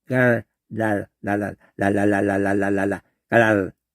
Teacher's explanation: 근데 그거를 제가 이렇게 굳이 하는 이유가 뭐냐면은 빨파초로 순서로 하는 걸로 해가지고 이 여린이 전장으로 하다가 혀소리로 혀가 여기 안에서 막 굴러요. 이 리을 발음 혀 끝으로 요 안에서 막 굴러.